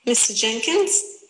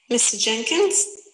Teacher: on the second syllable the voice is going up it's rising and we're stressing the first syllable · the speaker was using her voice to her intonation, so you understand it's a question. Her voice was actually going up.